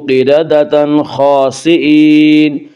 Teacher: نون ساکن اور تنوین کو بغیر غنہ کے پڑھیں گے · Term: اظہار حلقی